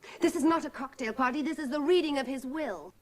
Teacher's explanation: переходит на грудной резонатор и сейчас добавит еще больше драматизма.